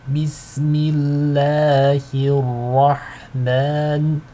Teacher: The ha is light, but the ra is heavy. Okay. Now, by heavy and light, I'm really referring to tafkhim and tarqiq in Arabic.